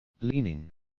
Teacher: Leaning is a 2-syllable word with stress on the first syllable